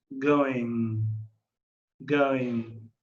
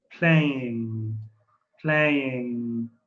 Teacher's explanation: When we have ing or just ng, we tend to remove the G and lengthen the sound of the N.